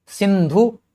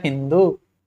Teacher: संस्कृत में जहां भी दंत स सुनाई पड़ेगा, अवस्था में वो ह के रूप में दिखता है।